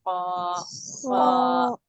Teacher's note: क़ाफ को भी मोटा और ऊंचा, यानी कि थोड़ा खींच के पढ़ रहे हैं